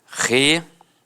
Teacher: Algumas pessoas dão uma extensão na fala e acabam falando relatório. Então, separa o O do I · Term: proparoxítona eventual